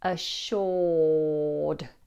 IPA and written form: əˈʃɔːd (assuré)